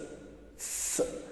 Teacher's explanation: And the third one is s, s. It is voiceless alveolar sound.